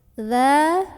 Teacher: Karena ada huruf dzal yang berbaris fathah berdiri ya, atau boleh juga disebut dengan mad asli. Maka cara membaca dzalnya ini dipanjangkan sepanjang 2 harokat saja. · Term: mad tabi'i